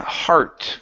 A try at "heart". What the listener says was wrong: Give me an R sound instead of hot. It's heart.